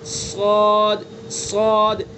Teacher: صاد کی صفت ہے پر ہونا یعنی منہ بھر کے پڑھنا, صاد صاد. اگر ہم نے صاد کو منہ بھر کے موٹا کر کے نہیں پڑھا تو یہ سین بن جائے گا, سواد بن جائے گا, سواد.